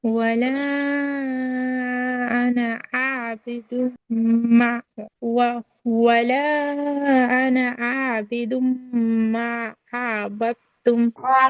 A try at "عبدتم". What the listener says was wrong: time মানে টেনে হবে না আর কি তাড়াতাড়ি হবে عبدتم